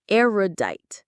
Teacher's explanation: The stress is on that first syllable.